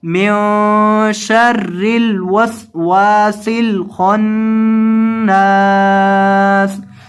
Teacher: اور وقف کی حالت میں آپ نے آخر سے سین کو ساکن کر دینا ہے وقفاً من شر الوسواس الخناس.